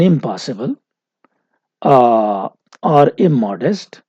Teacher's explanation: instead of in, we are using im because of this bilabial pa following it. So if there is a bilabial, you can see pa is a bilabial, and in this case, ma is a bilabial.